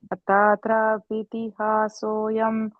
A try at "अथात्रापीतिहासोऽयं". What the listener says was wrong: And the trapiti, and the P is a long E, okay, there. This P.